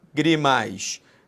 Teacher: A sílaba tônica não é a última, não é a penúltima, é a antepenúltima. É a famosa proparoxítona.